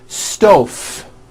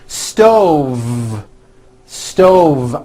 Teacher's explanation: a hot stove with a voiced v